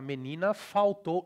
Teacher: The L becomes U, it's a W in IPA